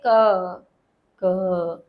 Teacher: लेकिन जब आप धीरे बोल के देखेंगे क क जब आप इस प्रकार बोल के देखेंगे आप महसूस करें अंदर कि आपके अंदर यहां गले में कुछ हलचल हुई और वो हलचल क्या थी वो यही थी कि कंठ के पीछे के भाग ने आगे के भाग को स्पर्श किया था उसके पास गया था तब आप क बोल पाए तो ये है कंठ वर्ण जिसमें कंठ ही स्थान है और कंठ ही कर्ण है।